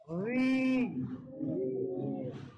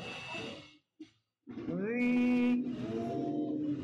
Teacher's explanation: জিহ্বার আগার সামনের উপরে দুই দাঁতের আগার সঙ্গে লাগিয়ে রালটাকে উচ্চারণ করতে হবে।